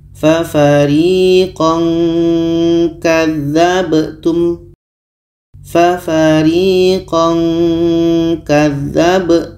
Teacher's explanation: maksud samar ketika kita sebut tanwin kita sudah merasakan huruf k k ini letaknya adalah di Pangkal lidah · ketika sebut tanwin kita sudah merasakan huruf k jadi bunyi tanwinnya agak samar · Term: ikhfa